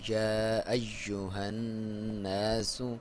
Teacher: حمزہ کو کلیئر کریں گے، اور یا کے اوپر شد ہے تو اسے دبا کے پڑھیں گے